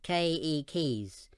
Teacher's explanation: with the accent on the first syllable